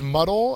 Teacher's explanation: the first syllable is the accented one